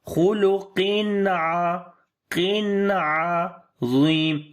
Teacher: After the tanween, the next letter is ain. So we make izhar here, the clear sound of noon.